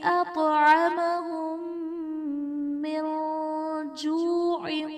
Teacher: یہاں پر ادغام شفوی کا قاعدہ ہوگا، یعنی میم ساکن میں ہم غنہ کر کے پڑھیں گے